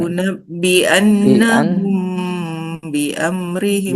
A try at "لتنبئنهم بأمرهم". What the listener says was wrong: Ya. Oke, bagus.